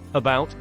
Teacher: In about, the second part of the word bout is stressed, but not where the A is. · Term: schwa